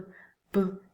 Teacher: So it is similar to the sound P, but voiced in a different way, meaning that you vibrate with your vocal cords